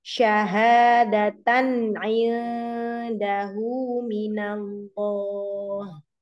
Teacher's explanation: Tanwin bertemu dengan ain, jadi tidak disamarkan, tidak ditahan. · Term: idhar